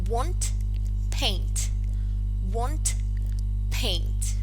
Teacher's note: you will realize that it ends in a voiceless alveolar plosive t.